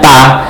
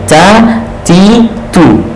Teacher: Ya, karena huruf t kita tidak mengalir nafas. Tapi kalau orang Arab punya t itu, huruf ta itu ada aliran nafasnya. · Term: hams